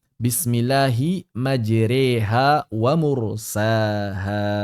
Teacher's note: tidak dibaca majroha, tidak dibaca majriha, melainkan menggabungkan keduanya menjadi majreha. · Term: imalah kubra